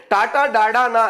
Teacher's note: నాలుక కొనభాగము నుండి పుట్టిన ఈ మూర్ధన్యాలు